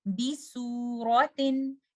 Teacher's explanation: recite letter Sin without making your back of the tongue elevated because the makhraj of Sin and Sod is exactly the same. If I bring my back of the tongue up, I will make this letter Sin as if I'm giving Sod.